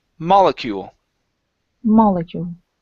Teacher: The stress is at the very beginning of the word.